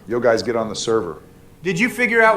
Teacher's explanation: The words don't flow with each other. It's like they're saying each individual word, each individual syllable. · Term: choppy